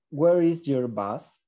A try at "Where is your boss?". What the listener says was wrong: Bus, like the bus or boss?